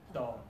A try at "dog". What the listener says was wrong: That's right. Perfect.